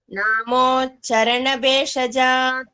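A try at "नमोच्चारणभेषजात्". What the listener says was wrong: long. It's long, dirga. Namo Charana. Cha. No, it is not cha. Namo Charana Beshajat.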